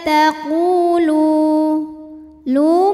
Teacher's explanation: wau sukun didahului baris damah maka huruf lam panjang dua harakat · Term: Mad Thobi'i